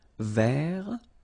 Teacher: masculine form, don't pronounce the final T